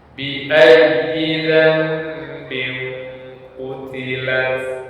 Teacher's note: huruf ya yang bertasydid tersebut tidak dibaca dengan dengung tentunya. Demikian juga harus dinabar atau ditekan sehingga ya bunyi ya tersebut sedikit naik karena penekanan pada huruf ya tersebut.